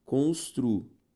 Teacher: Perceba que a sílaba tônica já é a penúltima.